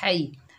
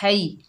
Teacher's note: हा के ऊपर ज़बर, आगे या साकिन है, हा को या से मिलाएंगे, ये या लीन है, नरमी और जल्दी से अदा करेंगे। और हा को हलक के दरमियान से अदा करेंगे, हई, है नहीं पढ़ेंगे हई।